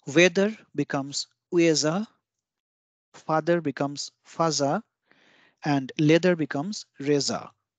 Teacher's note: The hard th sound in foreign words is similar to the soft d sound. Hence, for the hard th sound, which gives a sound of the, a relevant sound from the za, ji, zu, ze, zo line of katakana is chosen.